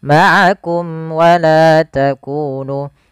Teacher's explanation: Di sini sebenarnya ada hukum tajwid juga, yaitu adanya mim mati bertemu dengan waw, yaitu izhar syafawi, yang dimana harus dibaca dengan jelas suara mimnya dan tidak boleh ditahan